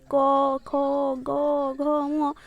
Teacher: एहा कंठरु आसुथिबारु एहाकू कंठ्य वर्ण कहा जाए